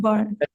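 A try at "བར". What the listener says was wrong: No, you actually said it correctly.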